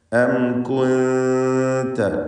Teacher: അം എന്ന് പറയുമ്പോൾ സാക്കിനത്തായ മീം അതിന് ഇൽഹാർ ഷഫവി നൽകി മണിക്കാതെ വെളിവാക്കുക.